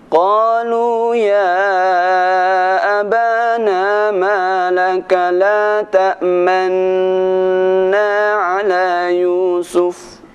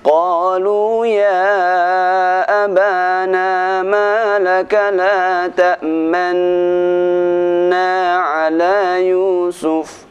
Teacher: Ada sedikit monyongnya ketika kita membaca lafaz la ta'manna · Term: Ishmam